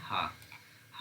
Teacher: हा वर्ण है जो काकल है